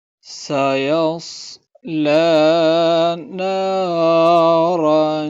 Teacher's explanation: سین کو ہم باریک پڑھیں گے اور صاد کو موٹا پڑھیں گے۔ سین کی جو آواز ہے وہ سیٹی والی ہے